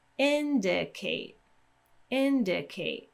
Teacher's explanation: primary stress goes at the beginning, so that one's going to have a little bit more weight. You may hear that that syllable sounds a little bit, tiny bit longer, but the main thing that we're going to focus on is the pitch.